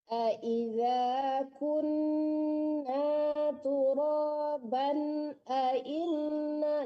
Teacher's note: turoban itu nggak ada samaran, langsung ditekan ke nun ya. Itu namanya izhar. · Jangan tertahan di ban karena tidak ada dengung di situ. Itu hukumnya izhar.